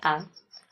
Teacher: आ का उच्चारण करने में भी ध्वनि जो है हमारे कंठ से निकलती है। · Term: कंठ वर्ण